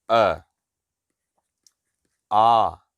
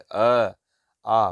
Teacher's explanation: देखिए ओंठों की स्थिति अवृतमुखी हो रही है